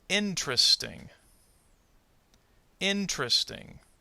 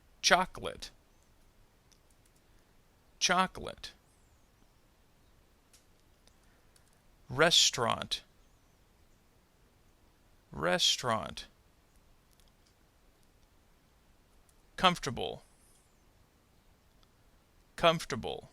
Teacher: notice how the middle syllable will disappear again all of them share the same idea that they have